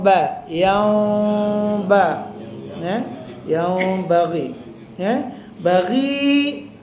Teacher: nun jumpa ba dia dengungkan mim seolah-olah bibir kita hampir katup